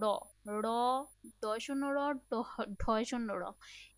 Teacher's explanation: তোমার জিহ্বার যে আগার অংশটা বা ডগা, এটা উল্টে গিয়ে তোমার উপরের পাটি দাঁতের মূলে একটা টোকা দিচ্ছে। এই কারণে এই যে শব্দগুলো, এই যে ধ্বনিগুলো, এগুলো আমরা মেইন নাম তো জানি, এটা তাড়িত ধ্বনি। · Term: টোকাজাত ধ্বনি